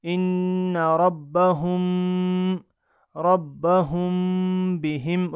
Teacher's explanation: اس وقت بھی ناک میں آواز لے جانی ہے اور ایک الف کے بقدر اس کو کھینچ کر پڑھنا ہے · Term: غنہ کے ساتھ اخفا